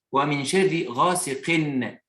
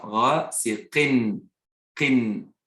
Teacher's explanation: on prononce un Nun après la lettre qui porte l'accent doublé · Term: Nun prononcé